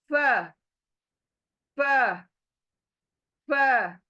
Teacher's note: के होठ को लगेगा और यह लेटर आधा होगा फ फ ऊपर के दांत दो नीचे का होठों का अंदरूनी हिस्सा यह टच होगा ऊपर के दांतों के किनारे को और ये लेटर बारीक अदा होगा फ मुह चौड़ा होगा आपका